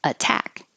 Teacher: this T can't change to a d even though it's between two voiced sounds because it's in the stressed syllable